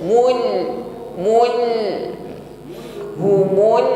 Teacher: Perhatikan ketika menekan pada huruf lam yang bersukun. Nah, di situ sebagian bunyi huruf lam masih mengalir, namun hanya sebagian, ya. Sifatnya tawassut, jarayanul juz'i lis saut, ada bunyi suara huruf, tapi sebagian saja yang mengalir.